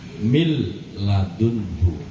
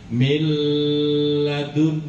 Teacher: Ada sukun. Iya, ada nun mati bertemu dengan lam. Makanya huruf nun dimasukkan ke dalam lam. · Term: idgam bila gunah